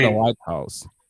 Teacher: when we have white house we have only one stressed syllable